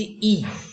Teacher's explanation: দেখবে আমাদের মুখের ভেতরের জিভটা, জিভের সামনের দিকটা ওপরে উঠে থাকে, ই কিছুটা উঠে থাকে। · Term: সম্মুখ স্বরধ্বনি